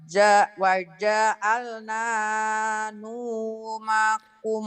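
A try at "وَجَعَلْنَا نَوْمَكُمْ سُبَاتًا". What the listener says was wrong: Bukan nu Bu, ini nau kan patah bukan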